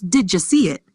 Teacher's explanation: But in natural, connected speech, it becomes did ya see it, with the ya sound appearing between see and it.